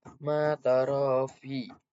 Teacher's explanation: untuk ro yang berharokat fathah itu dibaca takfim atau tebal